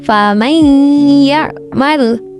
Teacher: Di sini ya dia bertasydid karena ini adalah bacaan idgham bihunnah. Idgham bihunnah dibaca dengan memasukkan huruf suara nun mati ke huruf idgham bihunnah